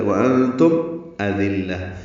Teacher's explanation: وَأَنْتُمْ أَذِلَّةٌ حمزہ اقصی حلق سے ادا کریں گے، دال نرمی سے پڑھیں گے، لام سے ملائیں گے، لام کو تائے مربوطہ سے ملا دیں گے وقفاً، تو یہ ہاں میں تبدیل ہو جائے گی، یہاں وقف بالابدال ہو جائے گا.